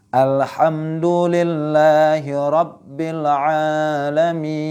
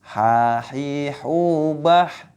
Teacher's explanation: Kalau H tanpa titik ya berarti H tipis, yaitu tempatnya adalah di tenggorokan.